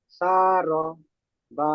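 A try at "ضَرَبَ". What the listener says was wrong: র টান হয়ে যাচ্ছে, র টান হবে না, শারবা।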